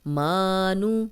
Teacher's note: میم پہ کھڑی زبر ہے، 2 حرکات لمبا کریں گے، نون کی پیش کو لمبا ہونے سے بچائیں گے۔